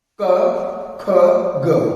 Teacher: ਕੋਮਲ ਤਾਲ ਦੇ ਨਾਲ ਜਿਹੜੀਆਂ ਧੁਨੀਆਂ ਟਕਰਾਉਂਦੀਆਂ ਨੇ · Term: ਕੋਮਲ ਤਾਲ ਦੀ ਧੁਨੀਆਂ